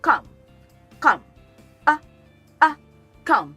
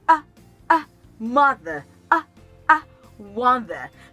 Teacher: word write pronounces come come while some people pronounce does calm this sound is in between the AA sound and oh